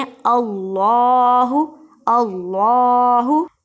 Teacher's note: इसमें जलालत अल्लाह के लाम को मोटा पढ़ते हैं